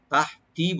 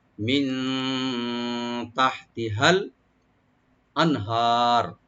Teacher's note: মিন এখানে আমরা নুন এখানে এফা করব, মিন তাহতিহাল, তাটাকে ওপেন রেখে হাটাকে একটু আমরা হামস করবো, এখানে গলার মাঝখান থেকে আনবো, তাহতি বলবো, আর হাটাকে রাইট দিয়ে লামের সাথে মিলাবো, মিন তাহতিহাল আনহার।